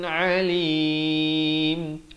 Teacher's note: Jangan baca a. Di sini makhraj huruf ain di pertengahan kerongkong